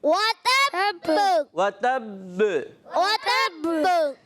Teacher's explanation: बा की आवाज़ आए, भ की आवाज़ नहीं है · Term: कलकला